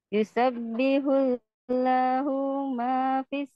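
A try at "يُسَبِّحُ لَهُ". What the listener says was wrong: hati-hati. Hu-nya tidak kepanjangan. Yusabbihu lahu.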